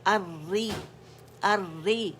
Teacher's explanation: ٹھیک ہے، را کے مخرج پہ آپ جان ہیں، باریکی سے ادا کریں گے. زبان کا درمیانی حصہ جو ہے وہ ریز ہوگا کسرہ کے لیے، لور جو نیچے ڈراپ ہوگا